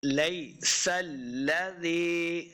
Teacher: اولیس الذی، اوا حمزہ کو لمبا نہیں کریں گے، واو کے اوپر اپنے ہونٹ گول کرنے ہیں. اوا لیس، لئی کو بھی لمبا نہیں کرنا، یا لین ہے